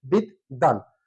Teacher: দ এর সাথে বফালা থাকার কারণে এখানে দুটো দ উচ্চারিত হয়েছে